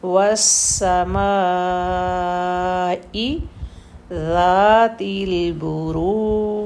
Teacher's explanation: سین کی سیٹی کلیئر ہوگی